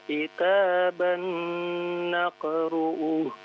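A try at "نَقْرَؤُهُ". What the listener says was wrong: Naqra'uh. Ra bukan ru ya. Pendek ya, naqra'uh.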